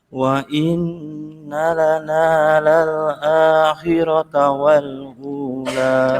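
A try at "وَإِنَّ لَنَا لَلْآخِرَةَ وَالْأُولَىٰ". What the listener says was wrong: Coba kho-nya ngero akhirata. Khirata. Khi sama kayak busis. Kho, khu. Ngorok.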